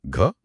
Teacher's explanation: ये कंठ्य है, महाप्राण है और सघोष है